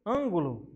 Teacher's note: a antepenúltima, está acentuada e é a mais forte. Nesse caso, ela será uma proparoxítona.